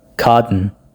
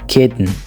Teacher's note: A glottalized T happens most commonly when a syllabic alveolar nasal sound follows immediately